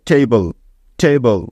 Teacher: আমেরিকানরা এ এর উচ্চারণটা এই এর মত করে